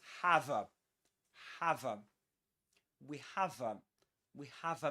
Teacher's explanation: the linking of the final consonants, the V sound with the next vowel sound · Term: catenation